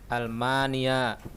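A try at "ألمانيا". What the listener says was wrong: Ya, bagus.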